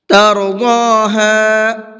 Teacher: ضاد کو پر کر کے پڑھیں گے